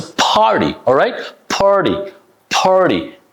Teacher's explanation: So this t become like a soft d